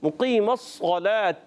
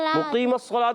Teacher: مقیم الصلاۃ میں ایک تو قاف کو موٹا رکھنا ہے, صاد کو موٹا رکھنا ہے, پھر تا کے نیچے زیر ہے.